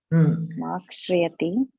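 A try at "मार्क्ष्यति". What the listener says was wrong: No. There is only one. There is only one ra.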